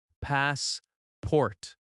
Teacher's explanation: The stress is on the first syllable. Passport. That first part is stronger and a little longer. The second syllable is softer.